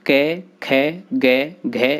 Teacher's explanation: इन वर्णों के उच्चारण में जिह्वा कंठ का स्पर्श करती है।